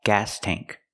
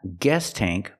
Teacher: We use the A sound like black cat. It's more open. The tongue is down in the front and up in the back. Gas tank. Not guess tank, but gas tank.